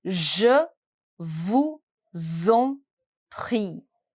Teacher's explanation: The liaison will create the sound of z. Je vous en prie.